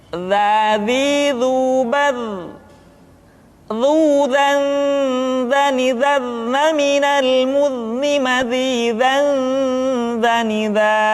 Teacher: huruf za diucapkan dengan menyentuhkan ujung lidah dengan dinding dua gigi seri bagian atas seperti kita mengucapkan huruf tha.